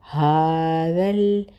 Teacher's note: ہا کے اوپر کھڑا زبر ہے، ایک الف کے برابر کھینچیں گے